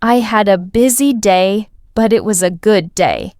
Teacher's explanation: Notice how your voice rises slightly on a busy day and falls softly on a good day. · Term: intonation